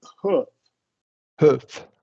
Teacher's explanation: Yeah, hoof. And we're going to do a lax short U there · roof and hoof, same lax short U